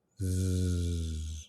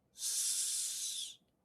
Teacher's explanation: Can you feel your throat vibrating with the Z, but not the S? That's the only difference.